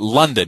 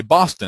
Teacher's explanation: the first syllable is stressed and the second is unstressed. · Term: trochee